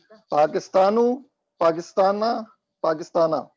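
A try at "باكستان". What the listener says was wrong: اچھا آپ کو پتا ہے عربی میں با نہیں ہے، با ہے. عربی میں با ہے، پا نہیں ہے. اسی لیے آپ دیکھیں پیپسی نہیں ہے، بے بسی ہے وہ.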